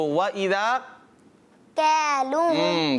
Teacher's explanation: لیکن کاف جو ہے یہ سخت حصے سے ادا ہوتا ہے نا